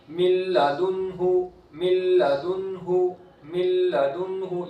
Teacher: من لدنہ، من لدنہ، من لدنہ، یہاں بھی نون ساکن کے بعد حرف یرملون میں سے لام آیا ہے، ادغام ہوگا لیکن گنہ نہیں کریں گے، لام اور را میں گنہ نہیں ہوتا. اس کے بعد نون ساکن ہے، نون ساکن کے بعد حروف حلقی میں سے ہا ہے تو یہاں اظہار ہوگا، نون ساکن اور تنوین کا پہلا قاعدہ.